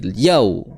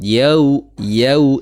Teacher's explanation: tidak boleh dihentak-hentakkan karena dia namanya wau layin berarti dia lembut mengucapkannya